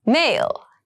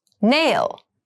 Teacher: m is a bilabial sound